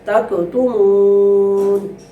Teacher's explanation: وقف کریں گے تو نون جو ہے وہ اس کے اوپر سے جو حرکت ہے وہ ختم ہو جائے گی، اور نون کی آواز یعنی نون حرف جو ہے وہ برقرار رہے گا.